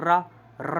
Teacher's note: र रा में आप देखें तो हमारी जीभ क्या है वो थोड़ी लपेट खा रही है मुड़ रही है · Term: लुंठित व्यंजन